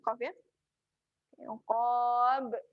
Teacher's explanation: Lantunan yang besar. Sebab berada di tempat waqaf. Lantunan yang kuat.